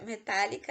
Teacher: metálica é uma palavra esdrúxula é porque a sílaba tônica é a antepenúltima